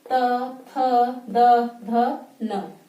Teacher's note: जब त वर्ग की बारी आती है तो हमारे जो जीभ है ये दांत से जाके चिपकता है या स्पर्श करता है।